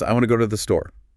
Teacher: The nouns, verbs, adjectives, adverbs, the content words, and the smaller function words like a, the, to, they get squeezed, said faster, softer